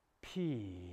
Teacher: the opening consonant a simple p sound what linguists call a voiceless bilabial plosive